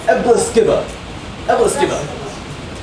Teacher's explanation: there's a schwa at the very end